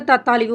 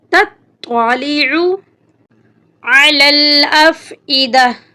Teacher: التی تطلع، اکثر لوگ اسے تطالع پڑھتے ہیں جو کہ غلط ہے. تا کو ہم طوا کے ساتھ ملائیں گے، طوا کے اوپر شد ہے، شد کو ہم سختی سے پڑھیں گے